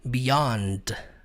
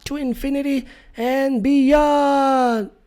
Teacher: Tecnicamente a palavra beyond, que significa além, ela termina com d. Beyond, só que o D não é pronunciado.